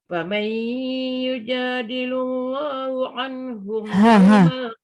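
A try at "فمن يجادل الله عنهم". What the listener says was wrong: Bukan hu. Ha. Yujadilullaha bukan hu.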